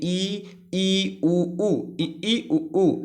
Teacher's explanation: इनके उच्चारण में हमारा मुख जो होता है वो सबसे कम खुलता है। जैसे आप बोलेंगे ई उ ऊ, तो आपका जो मुख है, आपका जो ओठ है, उसका शेप जो होगा वो आपका बहुत छोटा होगा, संवृत होगा। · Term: संवृत स्वर